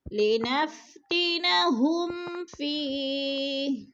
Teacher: فی پہ یہ مد ہے، دو حرکات کے برابر اس کو کھینچ کر پڑھنے ہیں